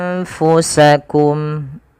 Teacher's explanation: ditahan suara dengungannya sepanjang 2 harokat